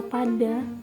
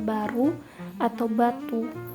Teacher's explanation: Contohnya yaitu pada kata pada dan juga batu yang bisa kita rasakan di pita suara kita. Pada kata padi atau pada, kita tuh nggak ada merasakan getarannya, sedangkan pada kata baru atau batu itu tuh ada getarannya.